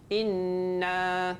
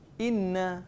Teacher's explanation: nun sabdu dengan mim sabdu baca dia mesti kena ada dengung sikit.